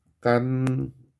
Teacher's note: 뒤에 니은이라는 비음이 왔기 때문에 이 비음 때문에 앞에 디귿이 비음으로 바뀌어야 되죠. 그래서 요 녀석이 다시 니은으로 비음화 돼야 돼요.